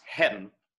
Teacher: heaven in this case and often in shakespeare is an elision so it was probably pronounced hen right so we don't want to pronounce it that way today